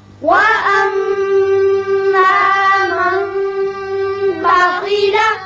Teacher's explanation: وأما من بخل. مشدد ہے، میم یہاں مشدد ہے، اس کو غنہ کریں گے